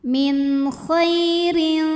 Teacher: huruf ra dibunyikan secara tarqiq sebab barisnya di bawah kasrah tanwin, maka dibacanya tipis ya